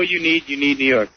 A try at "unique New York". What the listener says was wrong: You're not saying. You're saying you need New York. It's unique New York.